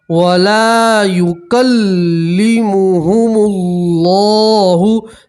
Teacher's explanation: لام کے ساتھ الف مدہ ایک الف کے برابر کھینچیں گے. اللہ کے لام سے پہلے پیش ہے، اللہ کا لام موٹا پڑھیں گے. ٹھیک ہے، یوم القیامت ولا یزکیہم.